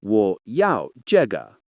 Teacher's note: Feel the fourth tone drop in 要, the neutral tone in 这, and the gentle ending of 个.